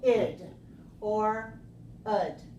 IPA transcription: ɪd